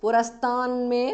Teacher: Purastat, the t in the end changes to n because of Sandhi, me.